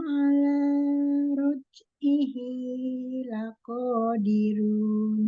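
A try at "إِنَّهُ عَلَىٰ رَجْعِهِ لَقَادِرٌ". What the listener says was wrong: Ya, jangan kepanjangan matobi'i.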